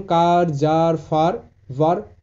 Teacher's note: যখন ভাওয়েল এ এর পর আর থাকবে, এই আর এর লেটারটি থাকবে, তখন এ এর উচ্চারণ আ এমনটা হবে